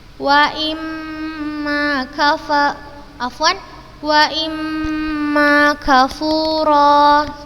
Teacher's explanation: Ini harokat kasroh bertemu dengan mim bertasydid, maka kita bacanya dengan gunnah yang dipanjangkan.